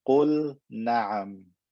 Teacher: Here I have a lam with sukoon, it's in a verb, and the next word is na'am. Pronounce the L clearly, there's no reason to do idgham here.